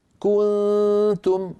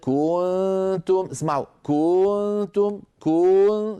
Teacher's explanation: صار بالضمه طال صوتها فتولد منها واو منطوقه